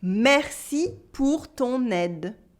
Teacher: Here I do la liaison between ton and aide